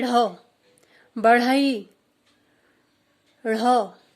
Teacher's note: ऐसे ही ढ़, बढ़ई, ढ़, इसमें भी वैसा ही है, पहले जीभ ऊपर मूर्धा को स्पर्श करती है, फिर झटके के साथ नीचे आ जाती है, इसलिए इन्हें द्विगुण व्यंजन कहा जाता है।